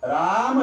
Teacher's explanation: र उच्चार करताना तोंड उघडतं आणि म उच्चार करताना मिटतं. तोंड उघडून म उच्चार होत नाही, तोंड मिटून र उच्चार होत नाही.